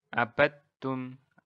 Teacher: Jadi nggak ada qalqalah dal di sini.